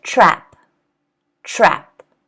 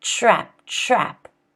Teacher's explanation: that T kind of becomes a ch.